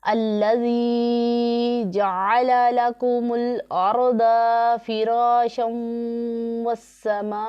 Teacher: रा साकिन है, उससे पहले ज़बर है तो रा को हम पुर पढ़ेंगे